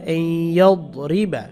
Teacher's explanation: ইয়ার উপর একটু সময় নিয়ে নাকের মধ্যে নিলে গুণাটা আদায় হয়ে যাবে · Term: গুণনা